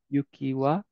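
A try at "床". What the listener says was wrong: So, yuki is snow. This word right here is yuka. Which is floor.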